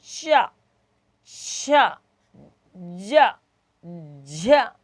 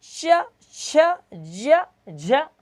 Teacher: ना तो आगे का भाग स्पर्श करेगा तालु को, ना पीछे का भाग स्पर्श करेगा, बीच का भाग स्पर्श करेगा तालु को।